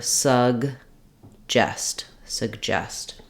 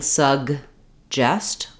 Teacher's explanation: when we say suggest we don't really let this first G out I'm not saying sug justest with a big break in between